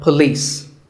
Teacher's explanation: It's pa and lis with the stress on lis.